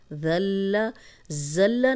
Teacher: زا سیٹی والا نہیں، یہ ذال سیٹی کے بغیر ہے